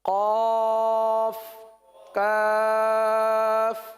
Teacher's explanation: قاف کا مخرج اور کاف کا مخرج بالکل قریب قریب ہے. قاف موٹا والا، زبان کی جڑ اور تالو کا نرم حصہ، یہ قاف نرم حصہ، یہ قاف کا مخرج ہے.